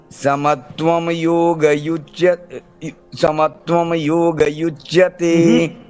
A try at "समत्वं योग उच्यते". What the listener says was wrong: समत्वं योग उच्यते, उच्यते, ठीक है। हाँ, वो उच्यते अलग अलग कर लेना प्रयास, ठीक है। कहाँ युच्यते, उच्यते। वो सुधार लेना उसको, ऐसे ही होता है, देख रहे हो ना, ऐसे ही आदत होती है। हाँ,